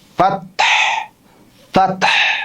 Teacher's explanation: যখন ফায়ের উচ্চারণ করবেন তখন আপনার নিচের ঠোঁটের উপরে আপনার উপরের যে মাড়ির দাঁত, এই দাঁত লাগবে